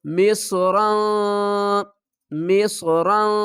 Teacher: مصر، صاد پڑھیں گے، ہم نے یہاں پر سین نہیں پڑھنا۔